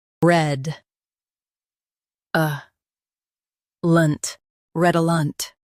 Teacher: Emphasize red and soften a lunt.